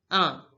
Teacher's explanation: One is pronounced as in French. Un. Please notice that is a nasal sound